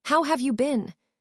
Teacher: The emphasis is on have and been.